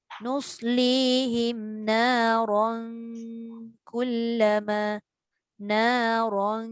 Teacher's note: Ra tebal. Tanwin bertemu kaf tu yang nipis.